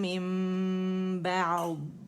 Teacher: نون ساکن یا تنوین کے بعد با آتا ہے تو نون میم سے بدل جاتا ہے، اور پھر میم کو ہم کیا کرتے ہیں کہ دونوں ہونٹوں سے نرمی سے ادا کر کے 2 کاؤنٹ کے لیے کاملہ گریڈ کا ہونا ہوتا ہے. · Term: اقلاب